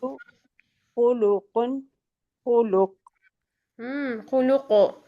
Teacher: قاف کو ہلائیں گے نا ہم ساکن حالت میں